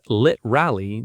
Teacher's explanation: often said as lit rally, dropping the middle syllable entirely in informal speech. The full pronunciation is literally.